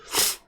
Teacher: Kalau tak terangkat pangkal lidah, maka takkan adalah unsur tebal tu. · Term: bunyi qa